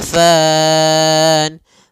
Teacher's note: Fan ada mad arid lisukun. Kita boleh memanjangkan 2 harokat, boleh 4 harokat, dan boleh pula 6 harokat.